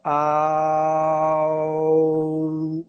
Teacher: Se você tentar, num sopro só, passar do A para o U, a letra O aparece no meio inevitavelmente. Você pode falar au, não tem como passar sem interrupção do A para o U, sem passar pelo O, né? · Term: ditongo